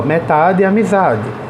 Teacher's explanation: o za de amizade e o tá de metade são as sílabas tônicas